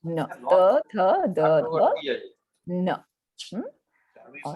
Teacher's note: keeping the tongue not really behind the teeth itself but at the upper where the teeth start and where the gums end out there the tongue touches that place and from there we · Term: dental